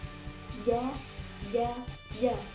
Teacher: Pertengahan lidah dan pertengahan langit-langit keluar huruf jim, shin, ya. Jim, huruf jim tidak boleh keluar nafas